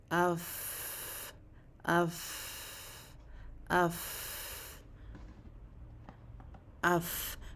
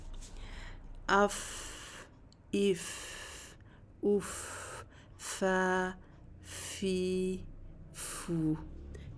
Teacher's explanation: تو جب ہم یہ اوپر کے 2 دانت اپنے نیچے والے ہونٹ کے تری والے حصے پر رکھ لیتے ہیں تو تب یہ ادا ہوتا ہے فا. فا کی ادائیگی میں ہم جلدی نہیں کرتے اور تھوڑا سا آواز کو کھینچتے بھی ہیں